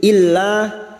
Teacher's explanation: kita panjangkan hadzailla lam alif lam yang bertasdid masuk dulu illa lam alif dua harakat kita panjangkan